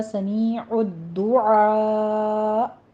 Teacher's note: سمیع میں یا مدہ ہے، عین وسط حلق سے ادا کرتے ہوئے آگے دال کے اوپر تشدید ادا کیجیے. سختی سے پڑھنا ہے، تھوڑا سا رک کر.